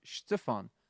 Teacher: we kind of put a bit of an emphasis on the first syllable as opposed to the second syllable